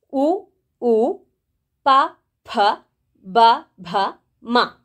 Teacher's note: ಈ ಅಕ್ಷರಗಳನ್ನು ನಾವು ತುಟಿಯ ಸಹಾಯದಿಂದ ಹೇಳ್ತೇವೆ